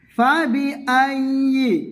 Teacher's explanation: ইয়া জিহ্বার মাঝ থেকে উচ্চারণ করবে।